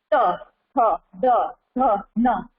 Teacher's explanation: त वर्ग वो दांत को टच करके बोला जाता है। त, थ, जो हमारा जीभ है ना, वो बोलते समय दांत को टच करता है, उसको स्पर्श होता है दांत का। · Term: दंत्य